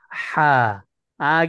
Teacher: dia mencampur antara wastul halq dengan aksal halq